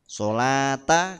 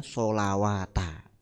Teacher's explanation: Waw dan ya setelah fathah panjang dianggap tidak ada maksudnya tidak dibaca ya biasanya ynya tidak ada titiknya kalau di Quran rasem itu